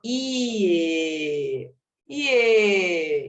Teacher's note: uma vogal pronunciada de forma mais fraca mais uma vogal então inicia na semivogal que é fraca e vai até a vogal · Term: ditongo crescente